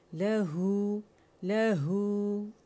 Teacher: لہو just to counts ہے کیونکہ مد صلہ صغریٰ ہے